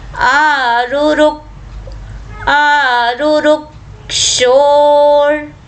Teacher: रु रुक, रू रू और आधा क, जो क्ष है वो क और श षटकोण से मिलकर बना है, संयुक्त वर्ण है। तो क और श को मिलकर बोलना है और क का स्पष्ट आघात लेना है क्योंकि रू ह्रस्व है।